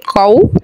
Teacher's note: क़ाफ़ वाव ज़बर क़ौ वाव साकिन से पहले ज़बर है वाव लीन नरमी से पढ़ेंगे